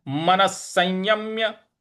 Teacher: विसर्ग लगा हुआ है। यहां पे स का ही उच्चारण हमें लाना है।